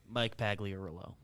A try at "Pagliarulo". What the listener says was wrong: You sound like you're speaking French where you're just like not confident in the last two syllables of it. Pagliarulo? Arulo is the end there? Pagliarulo.